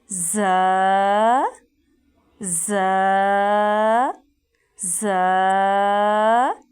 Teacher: زا ہے سیٹی والا حروف، یعنی سختی سے اس کو ادا کیا جائے گا۔